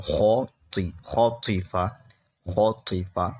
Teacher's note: یہ خا اور طا حروف مستعلیہ میں سے ہیں جو کہ موٹے پڑ جائیں گے ہر حالت میں اس لیے اسے موٹا پڑھ رہا ہوں.